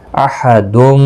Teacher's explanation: تنوین کے بعد آگے میم مشدد ہے، یرملون کا میم ادغام مع الغنہ ہوگا، غنہ کے ساتھ پڑھیں گے